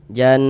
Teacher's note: Jan, sehingga di bagian jan, di bagian situnya tuh suaranya itu kita tahan sejenak ya. Kita gunnahkan. Nah, kira-kira sepanjang 2 harokat. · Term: gunnah musyaddadah